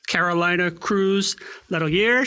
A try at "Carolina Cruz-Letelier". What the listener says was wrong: Carolina Cruz-Letelier. You got to roll your R's.